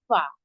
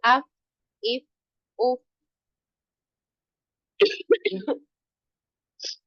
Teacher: ये जो आपके आगे वाले दो दांत हैं, ये आगे वाले दो दांत आपके नीचे वाले होंठ के अंदर जो तरी वाला, ठीक है, वेट पार्ट है, वहां पे जब लगेगा तो अदा होगा फा